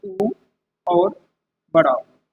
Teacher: दांत से हमारे कोई भी स्वर नहीं बोले जाते। और ओष्ठ से हमारे बोले जाते हैं उ और बड़ा ऊ।